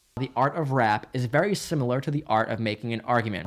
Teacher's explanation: In fact, in examples like the following, we get in one short phrase hard attack and both kinds of glottal T